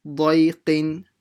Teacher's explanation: Make sure you pronounce the dad full mouth, and the qaf as well with a q sound